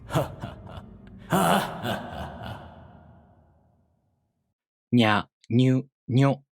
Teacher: the front part of the tongue, not the tip, touches the place of articulation, and the place of articulation is the back of the gum ridge, not the front.